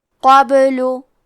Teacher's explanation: کلمت قبلو میں با پہ جزم ہے، تو ہمیں با کو قلقلہ سے پڑھنا ہے۔ قلقلہ کا معنی ہے حرف ساکن کو ہلانا، تو ہم یہ حرف کو ہلاتے ہوئے یہ کلمہ کو پڑھیں گے قابلو۔